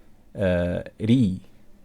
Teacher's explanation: the Tarqeeq is when we pronounce ra weak, so like saying ri